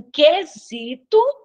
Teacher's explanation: Aqui em quesito, eu não escuto o U, então, eu tenho um dígrafo consonantal.